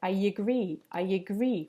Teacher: We add a little y sound to make the link between the two vowels